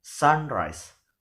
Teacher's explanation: The word sun here is a noun and the word rise here is a verb. So means the stress is given in the first syllable or in the first element or the noun